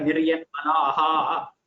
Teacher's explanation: So the visarga just takes on the swara of the previous letter.